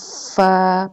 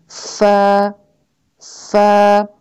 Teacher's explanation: آپ کے اوپر کے 2 دانت جو ہیں وہ نیچے والے ہونٹ پہ ٹچ کرتے ہیں اور پھر نکلتا ہے فا.